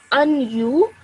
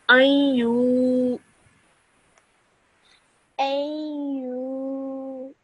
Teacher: So you only keep it in your nose. You don't actually press your teeth together to produce the noon sound. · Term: nasal sound